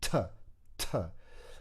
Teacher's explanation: And actually, having thought about this, I think for the sound t, I'm using the tip of my tongue against the top of the back of my teeth and building out some pressure and then releasing that t, t.